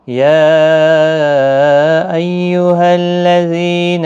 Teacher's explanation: یا مد منفصل ہے، 3 الف کی مقدار کے برابر کھینچ کر پڑھیں گے